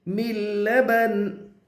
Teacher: उफ़्फ़िल लकुम मिन लबनिन, नून के नीचे 2 ज़ेर की तनवीन है, 2 ज़ेर को हालत वफ़ में जज़्म से बदल कर पढ़ेंगे